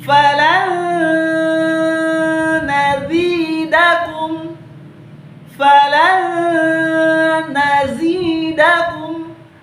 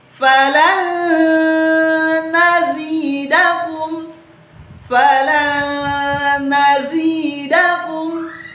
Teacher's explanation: Jadi nunnya kita leburkan atau kita hilangkan, dan huruf lamnya kita langsung masukkan ke huruf nun dengan cara kita dengungkan. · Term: idgham bi gunnah